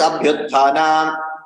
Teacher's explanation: Abhi plus utthana. Ikara becomes yakara for some reason.